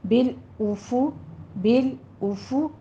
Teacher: حمزہ کے اوپر بھی ضمہ ہے، آگے فا کے اوپر بھی ضمہ ہے، ہونٹ گول ہوں گے